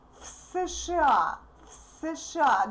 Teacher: We say из США в США. Again, voiced v becomes voiceless f